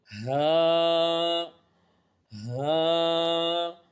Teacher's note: واو، واو، دونوں ہونٹوں کی گلائی سے ادا ہوتا ہے۔ ہا، ہا، حلق کے نیچے والے حصے سے ادا ہوتا ہے